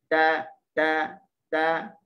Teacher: semasa kita menyebut huruf ta, yang hanya keluar adalah angin, suara tidak ada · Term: hams